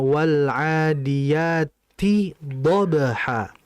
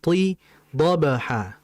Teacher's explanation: ta itu huruf yang tipis, ada setelahnya huruf dod. Dan jangan sampai ta-nya ini mengikuti ketebalan dod. Harusnya wal adiyati dhabha.